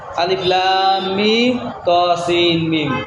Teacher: লাজিম হরফি মুসাক্কাল হরফের নাম চার গুণা করতে হয়